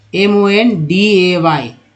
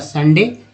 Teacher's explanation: अब ओ का देखते हैं, तो MONDAY, तो आप देख रहे होंगे ओ का उच्चारण यहाँ पर अ के रूप में MON मन होता है